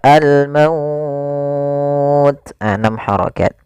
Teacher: mad lin yang panjangnya adalah kita boleh panjangkan 2 harokat, boleh 4 harokat, dan boleh pula 6 harokat